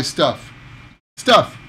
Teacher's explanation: the up sound is very very short